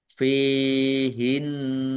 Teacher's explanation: jelas fihinna Fa kasroh Ya Sukun Mad thi'i panjang dua harakat Nun tasdid bacaan ghunah atau mendengung ditahan dua harakat biar tampak dengungannya